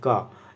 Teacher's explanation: जब हम का उच्चारण करते हैं तो हमारा जो का अक्षर है वो हमारे कंठ से निकलता है।